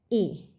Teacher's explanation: क्यों है कंठ तालव्य स्वर? ए का उच्चारण कंठ और तालु दोनों के सहयोग से होता है, इसलिए यह कंठ तालव्य स्वर है।